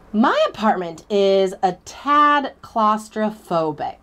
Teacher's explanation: notice how I got slower there at the end because those last two words those are the words I was stressing those are the words I was emphasizing my apartment okay my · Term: sentence stress